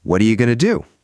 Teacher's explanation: What are ya is basically what are you all squished together. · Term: connected and reduced